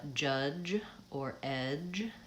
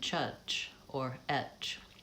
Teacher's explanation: the J sound, J, is a voiced sound, and people will say sometimes a CH sound instead. So rather than saying judge or edge, it might sound like chudge or etch.